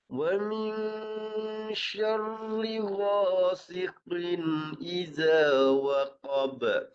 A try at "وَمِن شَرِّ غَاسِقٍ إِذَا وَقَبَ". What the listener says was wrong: Ini dapat nipis, tapi jelaskan lagi. Jangan cepat sangat. Wa min syarr. Nipiskan. من شر غاسق إذا وقب.